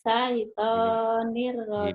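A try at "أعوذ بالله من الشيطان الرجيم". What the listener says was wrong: himinash kurang tasjidnya yo. A'udzu billahi minasy syaithanir rajim.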